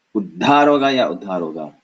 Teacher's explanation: just the lack of the pause or the addition of the pause has changed the meaning completely. And so they can play on this meaning on words just by adding a pause.